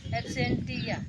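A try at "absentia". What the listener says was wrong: टिया नहीं बोला जाएगा उसको, गलत हो, एब्सेंसिया है वो।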